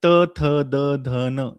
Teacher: यांचा सर्वांचा उच्चार दंत्य आहे दातांना उच्चारून होतो